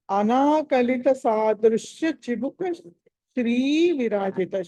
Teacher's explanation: శ్రీ దగ్గర అక్కడ దీర్ఘం ఉంది, శ్రీ అనాలి